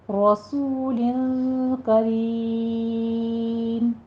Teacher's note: लक़ौलु, क़ाफ को पुर भी पढ़ना है, वाउलीन है, दोनों होंठों को ना तमाम गोल करते हुए अदा कीजिए। रसूलिन में र मुफ़ख्ख़म पढ़ी जाएगी, सू में वाव मद्दा है, लिन में इख्फ़ा हकीकी करेंगे। रसूलिन करीम, आखिर पे मद हल्की हो रही है तो यहाँ पे 6 काउंट करेंगे।